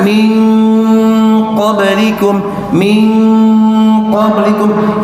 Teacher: Ini artikulasi dari ikhfa untuk masuk ke qafnya kurang jelas. Walaupun tidak salah, tapi ini kurang jelas dan sifatnya pun sedikit harusnya lebih dimasukkan.